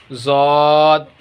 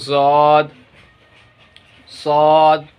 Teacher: सौद और ज़ौद एक ही जगह से अदा होंगे। ज़बान का किनारा, ज़बान के किनारे को ऊपर के दांत में सटाएंगे तो सौद और ज़ौद दोनों अदा हो जाएंगे